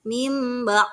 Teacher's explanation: Nun sukunnya seolah-olah tidak ada ditukar dengan mim · Iqlab itu artinya mengganti nun mati atau tanwin yang bertemu dengan huruf ba menjadi mim disertai dengan dengungan.